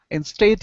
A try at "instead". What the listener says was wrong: all right, so right here you want to use a short E sound instead of stayed. Instead, it's instead.